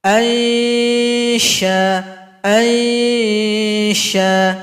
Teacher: huruf shin sama dengan huruf jim di tengah lidah. Arahkan ke langit-langit